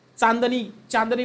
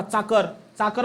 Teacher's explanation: चाकर हा आपल्या दंततालव्य वर्णामध्ये येतो